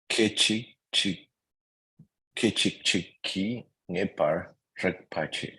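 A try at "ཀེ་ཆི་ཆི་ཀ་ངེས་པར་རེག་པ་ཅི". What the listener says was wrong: The R is silent.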